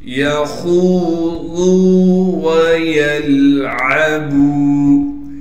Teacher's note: یخوضوا ویلعبوا، یا کو بغیر کھینچے پڑھنا ہے۔ خا کو موٹا کر کے پڑھیں گے، اور خا کو آگے واو مدہ سے ملا دیں گے۔